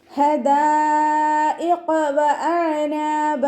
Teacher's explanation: ഹിൻ്റെ മഖ്റജ് വസത്തുൽ ഹൽക്കാണ്, sound clear ആക്കിയിട്ട് തന്നെ ഉച്ചരിക്കുക.